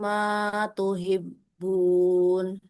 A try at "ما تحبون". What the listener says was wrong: Huruf H ya. Hahihu. Nah, jadi bukan tuhibun, tapi tuhibbun.